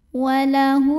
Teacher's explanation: Huruf ro dibunyikan secara tafkhim karena barisnya di atas dhammah. Cara membacanya ditebalkan. Pangkal lidah kita terangkat.